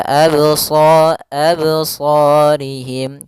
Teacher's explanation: pada lafal qalqalah ini tidak boleh ada hamzah tambahan